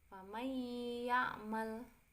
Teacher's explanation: huruf nun sukun bertemu dengan huruf ya, maka dibaca masuk dengan dengung. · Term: idgham bi gunnah